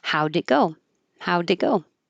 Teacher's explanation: we won't hear the T because we're just holding it before the consonant G · You won't hear any t noise.